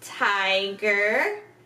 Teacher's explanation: our tongue touches the top of our mouth very quickly and we shoot out some air